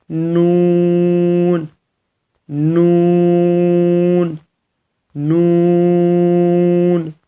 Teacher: جیسے آپ نے لام کو ادا کیا ویسے ہی کہ آپ کی زبان کی جو نوک ہے وہ تالو کے سخت حصے پہ لگے گی۔